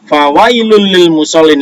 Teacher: Itu namanya idgham bila guna yang memasukkan tanpa mendengung.